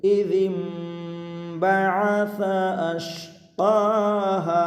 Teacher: ইযিম বাআসা আশকাহা, ইযিম বাআসা আশকাহা, প্রিয় দর্শক, জাল মিমজের জিম এখানে হলো কলব, মিম সাকিন নুন সাকিনের পরে বা এসেছে তাই গুণনা হবে